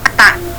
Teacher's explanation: Nah, ada penyakit yang daerah, nggak tahu ada nggak dari sini, daerah Bali mungkin ya, taknya itu dia bukan di pangkal gigi tapi naik lagi ke atas